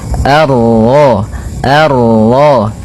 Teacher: Kemudian ini bertemu dengan huruf ra yang berharakat tasydid maka ra-nya kita baca dengan tafkhim